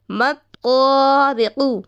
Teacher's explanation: طا کو ایک الف کھینچ کر پڑھیں گے، کیونکہ الف سے پہلے زبر ہو تو الف مدہ ہوتا ہے. تو یہاں پر الف مدہ کی قواعد لگ رہی ہے تو ہمیں ایک الف کھینچنا بھی ہے.